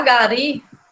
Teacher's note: Já gari não tem acento nenhum, tá? Porque o som mais forte é no ri. E o ri indica que é uma oxítona.